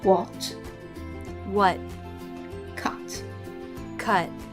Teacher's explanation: in American English, they tend to drop the T in the final position